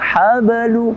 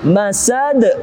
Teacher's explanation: Habalu tipis. Kalau ini masad lebih tebal, lebih keras dan lebih besar pantulannya